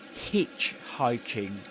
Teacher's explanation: in hitchhiking you stress the syllable hitch